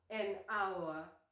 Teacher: because the “h” is silent, so it starts with the vowel sound “ow”